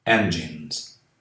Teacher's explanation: Depois de N, o S tem som de Z.